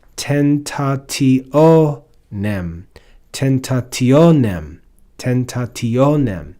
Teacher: But then we see the word tentationem, which has a bunch of syllables, but we hear that the accent is on the second to last syllable.